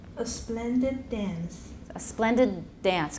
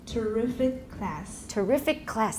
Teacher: consonants shortened when it's before an identical consonant